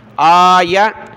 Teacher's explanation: حمزہ کو اوپر کھینچیں، یا کو نہیں